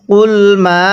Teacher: এই মিম এর মধ্যে তিন আলিফ টান দিব। যখন দেখব মদের হরফের উপর এরকম চিকন চিহ্ন এরপরে লম্বা হামজা তখন সেখানে আমরা তিন আলিফ টেনে পড়ব।